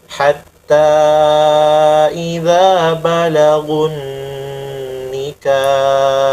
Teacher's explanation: nunnya kasih lama, kemudian ha jelas